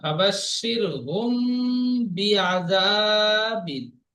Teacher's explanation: মিম সাকিনের পরে বা এসেছে, মিমকে একালি পরিমাণ গুণনা করে পড়তে হবে, একে ইকফায়ে সাফাবি বলে।